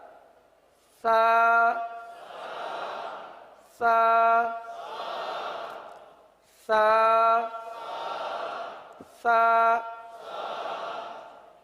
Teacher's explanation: اس کو نرمی کے ساتھ اس طرح لگائیں کہ گویا کہ سانس جاری ہو رہا ہو، گویا کہ سانس جاری ہو رہا ہو.